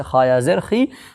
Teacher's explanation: یا مدہ کو ایک الف کے برابر کھینچ کر کے ادا کریں گے